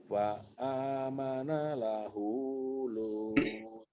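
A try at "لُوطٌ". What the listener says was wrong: Kurang kedengeran nih Lutnya. Lut.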